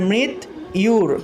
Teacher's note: জফলার পরিবর্তে ইয় উচ্চারণটা আসলো